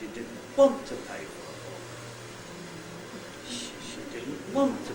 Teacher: want is accented because it doesn't do the same as all the syllables coming before it it goes up and then starts coming down again